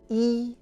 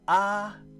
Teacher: e is closed and AH is open